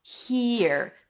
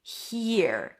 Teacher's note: It's an H sound, then a high E. He, and then you shift to the R. Here. Make sure the E is long enough.